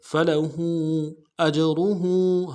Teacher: ہا کے اوپر الٹا پیش ہے اور مد عارض ہے، دو الف مقدار میں کھینچیں گے